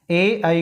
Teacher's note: ए आई को तालु कंठे कहते हैं क्योंकि तालु और कंठ से बोले जाते हैं।